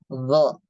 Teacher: huruf do sifat yang pertama dia jahar tidak mengeluarkan nafas